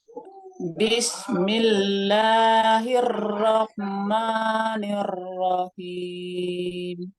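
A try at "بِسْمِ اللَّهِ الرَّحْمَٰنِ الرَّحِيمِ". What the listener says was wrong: Hirroh, takrirnya dikurangi lagi. Caranya sama. Tapi dia tidak pakai nunut. Yang dinaikkan adalah pangkal lidahnya yang di belakang. Ini ditahan Ibu. Hirrahmanirrahim. Sekarang milah dia tidak tebal. Tadi Ibu terasa agak tebal. Milah, ditipiskan lagi. Lamnya yang nempel tepinya aja Ibu. Tepinya nih.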